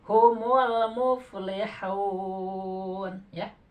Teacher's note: Mad arid lis sukun. Mad arid lis sukun. Jadi 6 harkat nih.